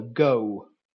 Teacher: O starts off near to schwa and ends with the oo. Remember, oo is a diphthong with a glide at the end of it, oo. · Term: back closing vowels